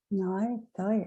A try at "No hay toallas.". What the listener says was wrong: Yeah.